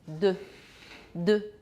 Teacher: your tongue is going to touch your teeth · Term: dental